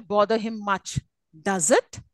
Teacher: question tag it's a falling tone